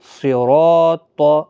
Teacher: صاد زیر سے، را الف زبر را، طا زبر طا، صراط۔ دیکھیں صاد، را اور طا تینوں کو پور پڑھنا ہے، را کو زبر کی وجہ سے، الف مدہ بھی ہے بیچ میں، اس کو کھینچ کر بھی پڑھنا ہے